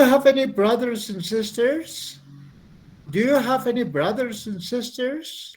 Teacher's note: La entonación sube, porque este es un yes, no question.